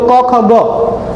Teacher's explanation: जीभ मूल व्यंजन भी होते हैं जो जीवा के मूल से बोले जाते हैं। तो क ख ग है ना इनको जीवा मूल व्यंजन भी कहा जाता है।